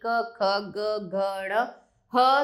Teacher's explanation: का वर्गीकरण इस प्रकार है कंठ कंठ मतलब गले से जिनको जिनके उच्चारण में गले से आवाज निकलती है